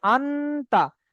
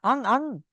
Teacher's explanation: শুধু গুণনা বললে হবে না, নাকে তুলে একালি পরিমাণ গুণনা করে পড়তে হবে, একে ইকফা বলে। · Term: নাকে তুলে গুণনা